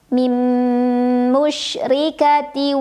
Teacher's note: Ra-nya dibunyikan secara tarqiq karena ra ada barisnya dan barisnya di bawah kasrah. Bacanya tipis, tidak perlu mengangkat pangkal lidah.